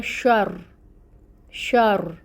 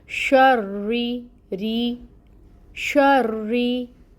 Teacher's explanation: एक रॉ जो है वो साकिन है और एक रॉ जो है उसके नीचे ज़ेर है। अब ये जो रॉ साकिन है ये मोटा पढ़ा जाएगा शर शर। और जो नीचे है ज़ेर वाला रा वो बारीक पढ़ा जाएगा